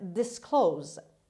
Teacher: The stress is on the second syllable, on k sound. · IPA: /dɪsˈkloʊz/